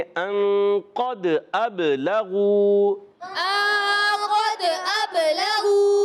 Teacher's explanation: हमज़ा को बा से मिलाएंगे, बा भी हुर्फ़ क़लक़ला है तो आवाज़ फिर लौट कर आएगी · दाल हुर्फ़ क़लक़ला में से, दाल साकिन है, क़लक़ला होगा, आवाज़ लौट कर आएगी